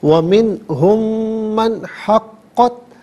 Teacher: چونکہ مشدد ہے قاف تو اس سے جماؤ کے ساتھ پڑھیں گے، حقت نہیں، حقت۔